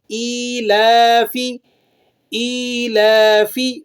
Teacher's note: سب سے پہلا لفظ دیکھیں ایلافی، حمزہ پر کھڑی زیر ہے، حمزہ کو ایک الف کے برابر کھینچ لیں گے۔ لام پر کھڑا زبر ہے، کھڑے زبر کو بھی ایک الف کے برابر کھینچ لیں گے